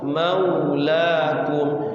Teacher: Itu jadikan huruf itu jadi u. Mau, jangan mau la jadi o, kurang tepat, harus u.